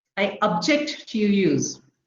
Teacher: stress falls on the second syllable